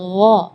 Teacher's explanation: tapi kalau huruf ghain itu dari bagian tenggorokan ya